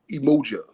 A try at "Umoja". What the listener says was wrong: Umoja. Umoja. You said it like like emotions.